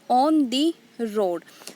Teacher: So here on the, these two syllables are unstressed and road is stressed. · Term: anapestic pattern